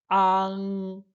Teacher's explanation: Só que agora, pra gente enfatizar o NG, você vai terminar com a boca aberta e a sua língua, como que se a parte de trás ela terminasse na parte alta aqui da boca · você vê que a boca fica aberta e você vê que a parte do fundo da língua, a parte de trás da língua, ela é que sobe para dar esse para dar esse som. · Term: ANG